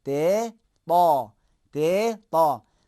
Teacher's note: تے کو موٹا کریں گے تو حرف تا بن جائے گا